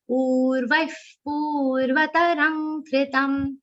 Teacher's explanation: Both pu should be long.